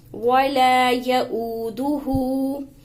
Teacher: حمزہ واؤ پیش او، واؤ مدہ کھینچ کر پڑھیں گے. آگے ہا کے اوپر بھی الٹا پیش ہے اس کو بھی کھینچیں گے.